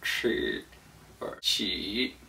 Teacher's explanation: The way that it's pronounced is with a flat tongue up in the roof of your mouth behind your gum line. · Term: CH sound